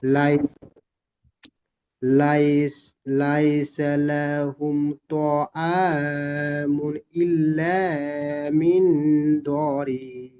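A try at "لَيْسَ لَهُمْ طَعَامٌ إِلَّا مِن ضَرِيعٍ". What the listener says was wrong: সুন্দর পড়েছেন। এখানে দ অক্ষরটি একটু টান হয়ে গিয়েছে, খেয়াল করবেন। ইল্লা মিন দরি, ঠিক এইরকম পড়বেন।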